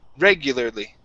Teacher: our stress is at the very beginning of the word